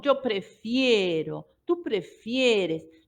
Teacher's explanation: hay una diptongación cuando yo lo conjugo en la sílaba más tónica